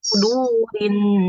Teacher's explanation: huruf sod. Tadi masih seperti su. Kurang tebal.